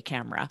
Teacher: you don't hear that e at all so you have to know that it's spelled with the e